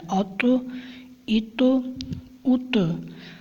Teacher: تا کیونکہ قلقلہ ہے اس کو قلقلہ کر کے پڑھنا ہے، آواز ظاہر کرنی ہے